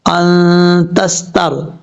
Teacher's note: نون ساکن کا اخفا ہو رہا ہے